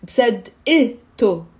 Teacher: We will say أنا مصدقته. Okay, so that فتحة مصدقة before the T مربوطة becomes a كسرة